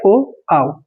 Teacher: इनका उच्चारण हो रहा है कंठ प्लस ओष्ठ से, ठीक है, कंठ प्लस ओष्ठ से, तब जाके कंठोष्ठ बन हो गया है, ठीक है।